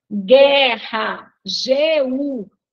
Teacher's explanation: letra que não tem som na nossa língua né guerra guu vejam que nós não escutamos o som do U né Então aí a gente tem Gu que é um dígrafo